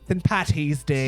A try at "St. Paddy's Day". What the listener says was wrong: St. Patty's, not Patty. There's a D in when we say St. Paddy's. Imagine, all right, when you're talking about your daddy, just imagine it's your Paddy.